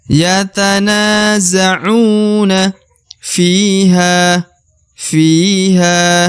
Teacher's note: huruf Ya Sukun di depan huruf Fi maka F wajib dipanjangkan dua harakat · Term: dipanjangkan 2 harokat